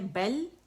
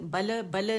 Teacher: لام میں توسط ہے، آواز تھوڑی سی چلے گی. بل بل، اس طرح نہیں، بل بل نہیں کریں گے، قلقلہ نہیں کریں گے.